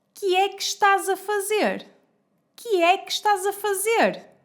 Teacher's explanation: Às vezes, quando uma palavra termina com a vogal E e a palavra seguinte começa com o som de vogal E aberto, o som do primeiro E transforma-se num I.